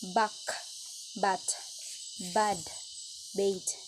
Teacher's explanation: Voiced bilabial stop B. Initial B. Buck, bat, bad, bait.